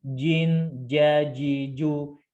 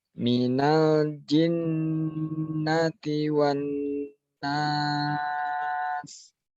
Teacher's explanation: Itu huruf ja lidah tengah dinaikkan ya supaya dia ja-nya jadi syiddah. Kalau ji itu jadinya hames ya, beda ya.